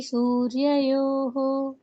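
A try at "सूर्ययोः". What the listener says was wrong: యోహో అంటున్నారు. యోహో రెండు అక్షరాలు కాదు, యోహో.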